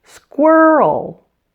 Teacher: And did you notice the sound before the L? It's a little added vowel sound. Oh. It almost seems to make this into a two-syllable word.